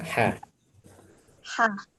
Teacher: Hnya di bagian tenggorokan kalau bagian laki-laki kurang lebih bagian jakun ya pertengahan ya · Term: Tengah tenggorokan